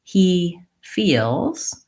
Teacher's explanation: I'm tense on both of those vowels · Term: tense E